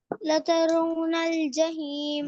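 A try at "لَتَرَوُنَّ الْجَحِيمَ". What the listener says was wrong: لترونل پڑھیں گے نا، واو کو وا کیوں نہیں پڑھتے؟ لترونل. واو کی آواز نہیں آ رہی، واو کی. لترونل.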